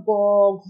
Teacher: উচ্চারণের সময় কি হয় আমাদের গলায় একটা কম্পন সৃষ্টি হয় তাই না একটা গলাটা কেঁপে যায় তো সেক্ষেত্রে আমরা এখানে যে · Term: ঘোষ